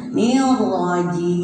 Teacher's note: Rohnya kalau dipatah itu tafhim, tebal ya.